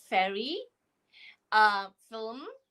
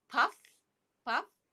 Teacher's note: the mouth position is your front teeth on your lower lip, and the sound is soft. It's a fricative sound.